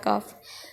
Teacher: کوے کے قریب سے لیکن ذرا منہ کی طرف ہٹ کر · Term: سادہ کاف